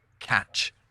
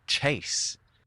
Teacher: The Normans made a k sound, where their counterparts to the south made a ch, and they made a ch sound, where central French made a s.